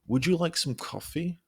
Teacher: your pitch rising to make it sound warm and friendly